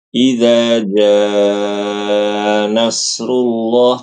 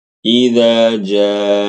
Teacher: Ketika membaca idza jaa, a-nya itu harus jelas. Jadi jangan ditashil.